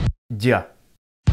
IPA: ɟ͡ʝ